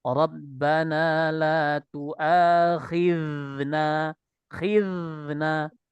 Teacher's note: Ketika kita melafadzkan huruf zal, keluarkan sifat rokhawanya.